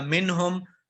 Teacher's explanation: اظہار کریں گے، اس نون کو، نون ساکن کو ظاہر کر کے پڑھیں گے۔